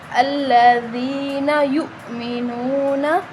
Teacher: یا کے آگے حمزہ ہے تو ہم اس کو تھوڑا سا جھٹکا دے کے پڑھیں گے۔ نون کے آگے واو مدہ ہے، واو مدہ وہ ہوتا ہے کہ اس سے پہلے حرف پر پیش ہو تو وہ واو مدہ کہلاتا ہے، اور ہم اس کو 1 الف کے برابر کھینچ کے پڑھتے ہیں، ٹھیک ہے، لمبا کرتے ہیں۔